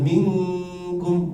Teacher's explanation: Karena kaf itu ada di aksal lisan, dia jauh dari ujung.